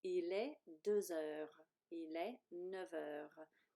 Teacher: think about your liaison because this word H, this letter H is like a vowel sound.